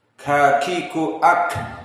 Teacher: kaf termasuk dari sifat huruful hams, yang mana jika dia disukunkan masih keluar dari jaroyan an-nafs.